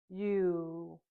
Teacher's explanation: the U sound is a voice sound, and when we make it, our mouth is slightly open and our tongue is towards the front of our mouth.